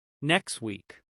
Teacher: in casual speech, the T can become very weak. You may hear something closer to next week.